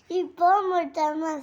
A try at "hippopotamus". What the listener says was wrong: ಏ ಮೋಟ ಅಲ್ಲ ಪೋಟ